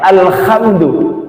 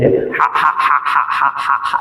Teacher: Ha sama ain di tengah tenggorokan.